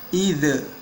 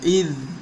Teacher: Nah, ini salah, ya, karena di sini id atau huruf zal itu tidak dipantulkan, bukan termasuk huruf qalqalah, ya. Jadi karena zal bukan termasuk huruf qalqalah, jangan sampai kita memantulkannya. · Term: ditahan